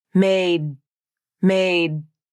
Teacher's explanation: here with your vocal cords you still want voicing and vibration the tongue tip comes up the vocal cords vibrate and you feel vibration here in the throat and at the alveolar Ridge the air builds up and then that's it now the unreleased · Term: unreleased D